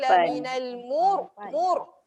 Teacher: ra dia kena getar lebih pada ra tebal.